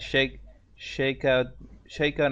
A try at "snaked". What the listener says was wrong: That's not an H. It's an N. You said shaked. It's snaked.